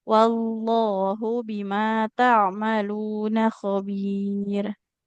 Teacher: Wallah, jangan ada wawullah ya, nggak seperti ada wawunya lagi. Wallahu, wa Al langsung masuk ke lam tebal.